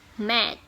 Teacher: a voiceless stop may be unreleased at the end of the word